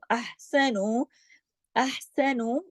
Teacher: ٹھیک ہے، للذین احسنوا، احسنوا، احسنوا، ہا کو گلے سے پڑھنا ہے